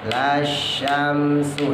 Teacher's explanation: alifnya gak dianggap, lanya pendek, dimasukin ke shin. Lasyamsu, sama kayak yang di atas, shin pertama tebal, shin keduanya tipis.